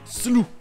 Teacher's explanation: Aux États-Unis, ça va se prononcer slough, avec le OU qui se prononce OU comme en français, avec toujours le GH muet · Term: prononciation américaine